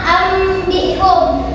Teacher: Jadi iqlab itu artinya mengganti nun mati atau tanwin yang bertemu dengan ba menjadi mim disertai dengan dengungan